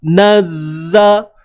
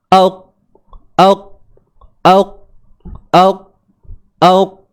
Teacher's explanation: Cuma kita kurang dengar sebab huruf zai ni dia bersifat rakhawah, suara yang terlepas. Nazza. So suara tu mengalir je.